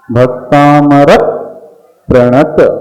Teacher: क्योंकि आगे प्र आया है तो एक्स्ट्रा स्लाइड प का उच्चारण करना पड़ेगा